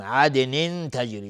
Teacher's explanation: دال قلقله میخواد چون ساکنه